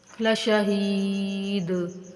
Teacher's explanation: لام اور شین کو بغیر کھینچے لیکن ہا کو حروف مدہ ہونے کی وجہ سے کھینچ کر پڑھیں گے